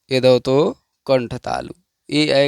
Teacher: ए ऐ का उच्चारण स्थान कंठ तालु है, अतः इन्हें कंठ तालव्य कहा जाता है। कंठ और तालु से इसका हम उच्चारण करते हैं।